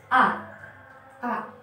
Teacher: Kemudian hamzah termasuk ke dalam makharijul huruf. Tempat keluarnya huruf itu di dalam aqsal halqi. Aqsal halqi yaitu pangkal tenggorokan. A. Ketika kita membacakan ataupun membunyikan huruf A, hamzah, ada getaran di dada.